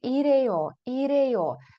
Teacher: Зверніть увагу що х майже не вимовляється